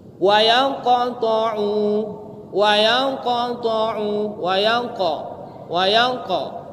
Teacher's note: Makanya tebal, besar pantulannya. Kalau qafnya itu sukun berarti dia sughra. Tetap ada pantulan tapi tidak sebesar pantulan kubro. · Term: qalqalah